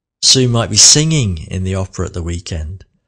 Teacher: Might was the slowest word there